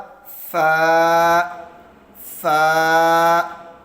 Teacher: ثنایا علیہ کے کنارے اور نچلے ہونٹ کے اندرونی حصے کے ملنے سے ادا ہوتا ہے، یعنی ثنایا علیہ کا کنارہ اور نچلے ہونٹوں کے اندرونی جو تری والا حصہ ہے وہاں سے ادا ہوگا فا، فا۔